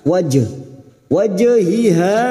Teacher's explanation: Jim sukun yang mati asli di tengah kalimat qalqala Sugro jangan lupa dipantulkan